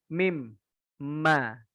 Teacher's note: Syafaten itu artinya dua bibir. Dua bibir yang bersentuhan atau mungkin dua bibir yang maju, intinya yang gerak itu bibirnya.